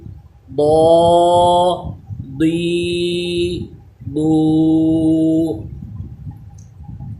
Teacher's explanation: ضاد اس کو پر پڑھنا ہے، زبان کی کروٹ اوپر کی داڑھوں کی جڑ سے لگائیں، یعنی زبان کا ایک سائڈ جو ہے یہ اٹھے اور اوپر کی داڑھیں جہاں سے اگتی ہیں وہاں پہ لگے، اور اس کو دعا نہیں پڑھنا، واو اس میں پیدا نہیں کرنی، پڑھنا اس کو داد ہے لیکن حروف مستعلیہ ہے تو پر پڑھنا ہے، آواز موٹی ہونی چاہیے